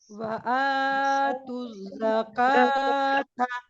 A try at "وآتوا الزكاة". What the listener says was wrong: काफ को बारीक कीजिए।